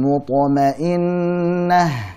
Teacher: Ya ayyatuhan nafsun mutmainnah, alirkan huruf ha. Jadi tak marbutah saat waqaf menjadi huruf ha, dialirkan.